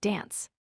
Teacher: Next, the A sound differs in words like dance. British speakers use a broader a sound similar to the A in father.